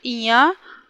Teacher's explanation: ञ अल्पप्राण घोष है